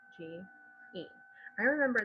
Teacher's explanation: Plume has that long U sound, and then edge, plumage.